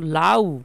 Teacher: লাউ আটা হচ্ছে পূর্ণ স্বর। পুরোপুরি উচ্চারণ হবে। লং উচ্চারণ করা যাবে। যেমন লাউ। এইভাবে যদি আমি উচ্চারণ করি তাহলে আর মধ্যে অনেক লং টাইম আমি থাকতে পারতেছি।